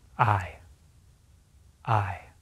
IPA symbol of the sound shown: ɪ